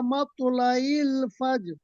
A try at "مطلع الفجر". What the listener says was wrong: আচ্ছা, শেষের জায়গাটা আপনার সমস্যা হচ্ছে হিয়া হাত্তা মাতলা ইল ফাজর, আইন, মাতলা ইল ফাজর।